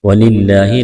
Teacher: لفظ اللہ کے نام سے پہلے زیر ہے، لفظ اللہ کے نام کو باریک کرنا ہے۔